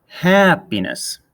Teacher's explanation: The stress in happiness falls on the hap part of happiness. If we exaggerate it, we get happiness.